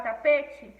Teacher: ela é uma paroxítona porque a penúltima sílaba é mais forte